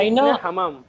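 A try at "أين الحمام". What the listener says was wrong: Aina al hammam or ain al hammam. You would skip the alif. Join the lam.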